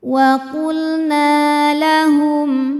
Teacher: hukum Mad Thobi'i dahohiri sebab ada Alif yang sebelumnya berbaris fathah cara bacanya huruf nun ini kita panjangkan dua harakat